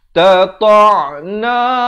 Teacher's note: Sayahlifuna billahi lawis, wa baris kasrah bertemu sin. Tata'na, ain makhrajnya di pertengahan kerongkong.